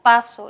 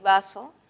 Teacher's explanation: los dos son oclusivos porque hay un obstáculo total